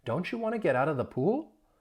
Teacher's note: because it is a yes no question, you really do have a rising intonation at the end